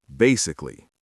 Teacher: Notice how the first syllable is the strongest.